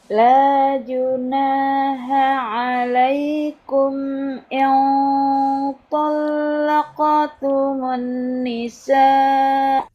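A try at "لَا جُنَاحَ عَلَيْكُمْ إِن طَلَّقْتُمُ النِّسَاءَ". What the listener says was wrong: Ayo, nun tasdidnya ditahan lagi lebih lama. la junaha.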